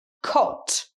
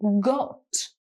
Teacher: the first word is cot does a very sharp k sound as you can hear cot the second word is got it's a g sound